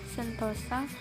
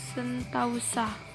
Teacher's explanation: Pengertian diptongisasi adalah proses perubahan vokal tunggal menjadi vokal rangkap secara berurutan atau diftong. Contohnya, kata sentosa, meskipun bentuk tersebut sudah dibekukan, kita masih sering mengucapkan sentausa.